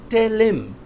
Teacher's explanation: Him और her बहुत common use होते हैं. जब ये बीच में आ जाता है तो im पढ़ा जाता है.